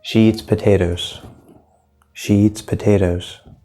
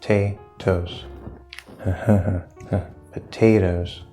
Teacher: potatoes stressed in the middle